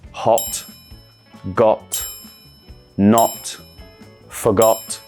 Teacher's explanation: in standard British we use a lot of short sharp o sounds in words such as hot got not forgot